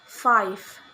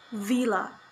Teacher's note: Labiodental sounds such as fa and va. These sounds are produced by contacting the lower lip with the upper teeth.